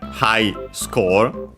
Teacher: Should be accented on the first syllable, just like in English, and it is.